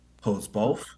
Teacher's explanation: holds is not as stressed but both is stressed